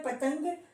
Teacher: पतंग का जब हम वर्ण विच्छेद करेंगे तो आप देखेंगे कि त पर अनुस्वार आया है और उसके बाद ग है, यानी ये अनुस्वार जो है क वर्ग का पांचवा अक्षर है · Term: पंचमाक्षर